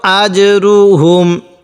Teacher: জিমটা একটু ধাক্কা দিয়ে পড়ব কারণ কপ্তা বা জিম দাল এই 5টি হলো কলকলা হরফ, আর এই 5টি হরফ উচ্চারণের সময় একটু ধাক্কা দিয়ে পড়তে হবে।